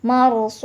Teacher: Jadi dibaca panjang, boleh 2, boleh 4 atau 6 ketukan. Marsus. Ini saya pakai 6 ketukan. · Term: mad arid li sukun